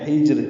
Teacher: جیم ساکن ہے اس پہ قلقلہ ہوگا